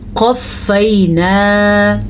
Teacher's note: ہم نے موٹا قاف ہی پڑھنا ہے